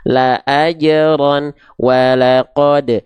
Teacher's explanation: Kol di sini adalah kol-kolah, pantulkan. Karena dipantulkan berarti nggak dipanjangkan, nol harokat.